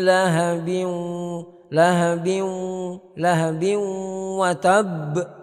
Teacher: harus kita baca dengan tetap kita arahkan ke hidung, khayshum. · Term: idgham naqis